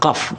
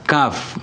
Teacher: Qaf dari pangkal lidah. Ya, pangkal lidah adalah qaf. Kemudian maju ke depan sedikit ada kaf.